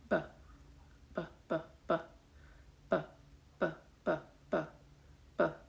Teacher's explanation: So you're feeling a little explosion of breath there with a sounded B.